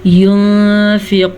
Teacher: मैंने नून को छुपे हुए गुन्ने के साथ पढ़ा है क्योंकि यहाँ पे इख्वा का कायदा हो रहा है।